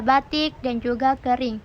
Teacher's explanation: Vokal I besar atau tertutup seperti pada kata batik dan juga kering